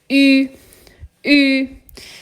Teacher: Você consegue ouvir que minha boca tá redondinha e que eu tô soltando um som de I. I. E nesse caso, né, na transcrição fonética, esse som ele é escrito com um Y. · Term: umlaut